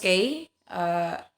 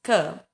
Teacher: When the tongue is lowered from the soft palate, the air escapes through the mouth with an explosive sound, and there is no vibration in the vocal cords. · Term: velar stop